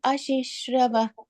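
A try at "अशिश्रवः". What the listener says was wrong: That fourth line, that ashishravah, that ish sound has to come. Ashishravash Shruti Sukham. Ashishravash Shruti Sukham.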